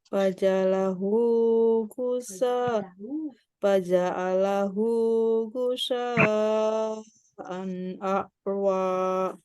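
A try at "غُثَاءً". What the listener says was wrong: Ulangi, gusa itu sa-nya pakai sa, ya, pakai yang huruf yang ke alif, ba, ta, sa. Huruf yang keempat, gusa. Sa, pakai sa.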